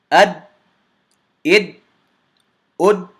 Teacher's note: Because I closed the articulation point, I didn't do the Qalqalah.